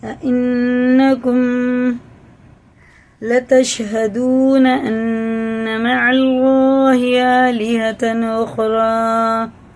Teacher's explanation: یہ نون پہ شد ہے تو یہ غنہ کر کے پڑھی جاتی ہے